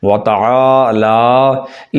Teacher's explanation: عین کو بھی لمبا کریں گے اور لا کو بھی لمبا کیا جائے گا، وتعالی نہیں، وتعالی۔